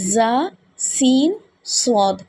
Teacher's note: زا، سین اور صاد کو ادا کرتے وقت سیٹی کی طرح تیز آواز نکلتی ہے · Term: سیٹی والے حروف